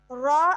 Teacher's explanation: زبان کی پشت والا کنارہ اوپر والے دانتوں کے مسوڑوں سے لگے گا تو اس سے ہمارے پاس را ادا ہوگا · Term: حروف طرفیہ